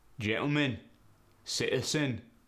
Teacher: the glottal stop you basically eliminate the T it becomes an a sound gentleman and citizen become gentleman sits